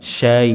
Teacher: Maka berhenti di sini berhenti sebagai mad lin, 4 harokat. Min syai', akhiri dengan hamzah, ada nabernya, penekanan, bukan mengambang. Syai', tapi ada penekanan, hamzahnya disukunkan.